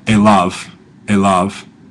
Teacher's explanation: end of a word like aav but that's how it's pronounced I'm just using a good modern Hebrew sort of pronunciation there doing our V like a v